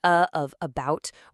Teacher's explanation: It's this little guy right here, the schwa. It's just a totally relaxed uh sound.